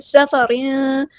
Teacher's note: سین کی سیٹی ہم واضح کریں گے